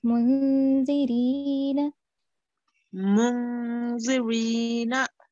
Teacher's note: This is an ikhfa. Right, so you have to make a nasal sound for 2 seconds. Partial nasal sound for 2 seconds.